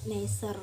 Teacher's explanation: N arupa kontoid nasal, apiko alveolar dan bersuara. Pengucapan bunyi ini dengan menutup arus udara dan paru-paru pada rongga mulut dan mengeluarkannya lewat rongga hidung.